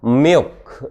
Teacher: 텅백을 빌럼을 향해서 빌럼 쪽으로 올려주는 것이다. 소프트 펠릿 쪽으로 올려주는 거고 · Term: 다크 L